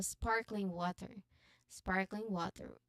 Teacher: So here we um we put emphasis on spark.